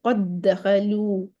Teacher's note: دال اور دال، دال کا دال میں ادغام. ٹھیک ہے، دونوں کی صفات ایک ہے، دونوں کے مخرج ایک ہے، سب کچھ ایک ہے، تو دال کا دال میں ادغام کر دیا.